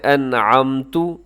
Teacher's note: انعمت میں آپ نے غنہ نہیں کرنا کیونکہ نون ساکن کے بعد عین ہے، یہاں پر اظہار ہو رہا ہے جسے اظہار حلقی کہا جاتا ہے، تو آپ نے اس کو تیزی سے پڑھنا ہے۔